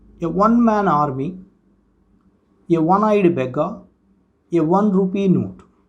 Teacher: Okay, so in this sense we can use it. Next, A is used before a word that begins with wa sound. This wa sound is also not a vowel sound, it's a consonant sound.